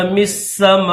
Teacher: میم کو سین کے ساتھ ملائیں گے۔ أَمِ السَّمَاءُ بَنَاهَا، یہ جو حمزہ ہے اس کے اوپر پیش ہے، لیکن جب وقف کریں گے تو اس کو ساکن پڑھیں گے۔